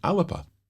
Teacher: a little uh sound in between the l and the b